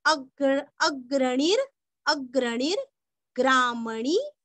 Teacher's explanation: णी दीर्घ और ग्रा के ऊपर का रफार हमें णी को जोड़ के लेना है